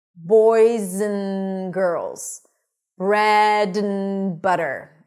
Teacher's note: So we turn the a into a schwa, and the d, we just eliminate.